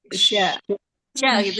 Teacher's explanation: Tengah lidahnya. Tengah lidahnya menempel ke langit-langit atas, bukan ke gusi. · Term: Huruf shin